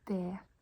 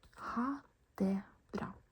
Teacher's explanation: It's written det, but we don't pronounce the T.